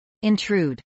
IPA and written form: ˌɪnˈtruːd (intrude)